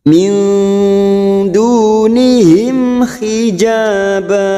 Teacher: mim sukun bertemu ha kita baca jelas tanpa mendengung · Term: idhar syafawi